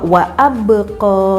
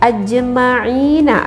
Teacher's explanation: maka membacanya harus kita pantulkan, ya. Nabratan qawiyatan, terdengar seperti suara pantulan yang kuat ataupun yang keras, dan cara pembacaannya itu adalah setengah harokat. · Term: qalqalah sugro